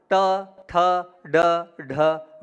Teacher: जीभ को जब आप पीछे ले जाएंगे वहां से ण का उच्चारण होगा